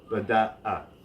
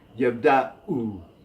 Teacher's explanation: Now the number 2 always represents that glottal stop in transliteration, so it's beda'a, as if it were two words. There's a break between the second and third syllable.